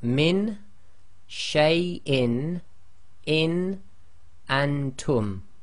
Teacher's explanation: pronounce as normal, i.e. there is no assimilation of any letters and there is no Ghunna taking place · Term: Izhar